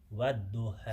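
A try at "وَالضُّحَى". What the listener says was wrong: So when you say what, I saw your mouth smiling. When you get to the da, you have to be full mouth. Remember, the da is a full mouth.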